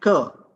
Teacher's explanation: k and g, these are pronounced from the velar region